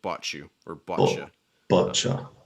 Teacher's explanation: American English like bought you very typically ends up with like a ch.